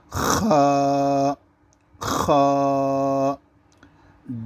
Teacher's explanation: اگر کھکارنے کی جس طریقے پر آواز آتی ہے، اس طریقے پر خا کی آواز آئے گی۔